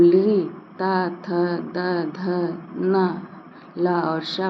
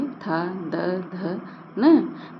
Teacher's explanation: जब हम ली, ता, थ, द, ध, ना, ला और शा बोल रहे होते हैं तो हमारी जिह्वा दंत को स्पर्श करती है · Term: दंत वर्ण